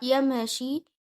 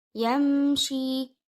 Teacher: You join the ya with meme, reading the meme clearly and not bouncing it.